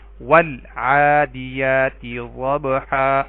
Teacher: عین حروف قمری میں سے ہے تو ال کا لام پڑھا گیا